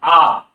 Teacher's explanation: এবার একটা স্বরধ্বনি রয়েছে যেটা আমাদের জিহ্বা একদম সব থেকে নিচে উচ্চারিত হয়, অর্থাৎ যেটা উচ্চারণ করতে গেলে জিহ্বা নিচে নেমে থাকে, সব থেকে নিচের অংশে, সেটা হচ্ছে আ। দেখুন আ একদম জিহ্বার নিচে থেকে আসছে আওয়াজটা আ, অর্থাৎ একদম আলজিহ্বার কাছ থেকে।